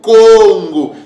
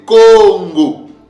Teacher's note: le deuxième K là, va se prononcer avec un son de G, comme un son de G